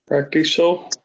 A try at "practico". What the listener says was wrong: Practico. Good. That C is a hard C. It sounds like a K. Good.